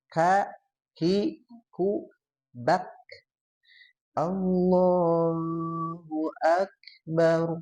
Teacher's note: kaf itu dia ada hamesnya, tapi juga dia ada syiddahnya. Jadi syiddah dulu baru hamas. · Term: huruf kaf